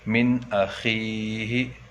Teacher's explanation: من اخیہ، یہ ہمیں دیکھیے نون ساکن کے بعد حمزہ آ کر ہے، اور یہاں بھی نون ساکن کے بعد حمزہ آ کر ہے، اس لیے یہ نون ساکن کو ظاہر کر کے بلا غنہ کے جلد پڑھیں گے